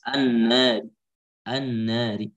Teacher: ketika waqaf dengan raum tipis an-nari, an-nari.